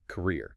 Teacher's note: >> But your career is your life's professional trajectory. The stress shifts entirely to the second syllable, career.